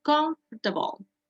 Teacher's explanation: Recuerde que esta palabra, la fuerza de voz va en la primera sílaba. Comfortable. Casi no se pronuncia la for.